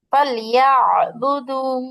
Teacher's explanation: إيلافهم فليعبدوا হ্যাঁ, এখানে আপনি কণ্ঠটা চাপাইতে যত পারেন তত সুন্দর শোনাবে আইনের মাখরাজটা